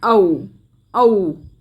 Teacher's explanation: तो कंठोष्ठ ध्वनियों में आती है हमारी ओ और औ, जिनका उच्चारण गले और होठ दोनों से होता है।